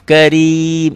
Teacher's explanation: Karena matobinya ketemu satu huruf hidup dihentikan. Karena dihentikan jadilah panjang. Itulah mad arid lis sukun. Mad panjang aridoh baris yang berganti jadi sukun.